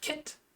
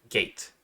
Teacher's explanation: Thus, velar stops occur when the tongue and velum form a complete closure, as in the phonemes K and G. The voiceless velar stop K can be heard in the word kit, and the voiced velar stop G can be heard in the word gate.